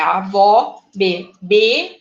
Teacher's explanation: a sílaba tônica é a última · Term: oxítona